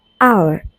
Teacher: Triphthong, a single syllable sound that glides through three vowel qualities